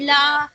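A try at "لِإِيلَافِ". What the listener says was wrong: नहीं नहीं नहीं, लाम में कितना हरकत होगा पहले ये बताइए। ली सिर्फ एक हरकत है, ठीक है, लाम में सिर्फ एक हरकत है, तो लाम को नहीं खींचना है, लेकिन ई को खींचना है। कसरा और या दोनों है, ठीक है। तो हम इस तरह से पढ़ेंगे, देखिए ली इलाफी, ठीक है, ली इलाफी।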